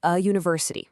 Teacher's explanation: university starts with that y sound which is a consonant sound